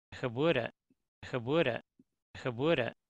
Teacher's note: there's a very nice voiced plosive closure there. And you can listen to this and you should hear the plosive.